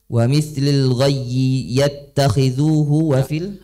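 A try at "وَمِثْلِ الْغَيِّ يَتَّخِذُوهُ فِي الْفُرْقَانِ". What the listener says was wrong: Antum baca jangan dari wamith. Ini syair, bukan kalimat. Betul kalimatnya wa mithli, tapi baca syairnya enggak begitu. Lil ghayyi yattakhidhuhu fil furqani. Memang kalimatnya wa mithli betul. Cuma karena ini syair harus mengikuti wazan.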